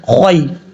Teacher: یہاں پر یا کو لمبا نہیں کریں گے اور شارٹ کٹ میں پڑھیں گے خوائی, اس طریقے سے. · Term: یا لین